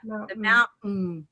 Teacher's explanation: There's the syllabic N.